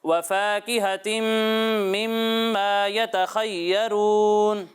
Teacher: فا یہاں پر الف مدہ ہو رہا ہے تو الف مدہ کو ایک الف کے برابر ہی کھینچ کر پڑھنا ہے